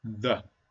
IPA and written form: ðə (the)